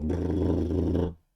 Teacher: It's like a bilabial trill.